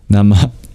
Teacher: at the end of the word Namah, which means salutations, there's a short exhale.